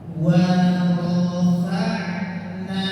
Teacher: Wa tipis, ro tebal, fa-nya tipis